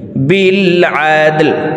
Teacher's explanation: দাল কলকলার হরফ নিচের দিকে ধাবিত করে ধাক্কা দিয়ে উচ্চারণ করব।